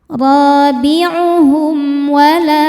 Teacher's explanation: Karena mim sukun menghadapi huruf selain mim dan ba yaitu huruf wau. Maka mim dibaca jelas. Robiuhum wala lam mad thobi'i zohiri. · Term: izhar syafawi